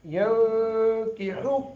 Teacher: نون ساکن کے بعد کاف حروف اخفا میں سے، یہاں اخفا کریں گے